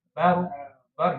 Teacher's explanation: Nah, itu salah lagi ya. Karena ba itu tidak punya sifat tebal, tapi ba-nya tetap tipis, ro-nya yang tebal. Bar jangan bor, jangan bor.